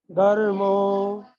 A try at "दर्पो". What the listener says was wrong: दर्मोनी दर्पो पवन वाला, पानी वाला पो।